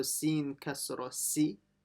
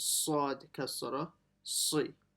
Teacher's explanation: make it full mouth and heavy, so it's different to the si. So si is light, si is heavy.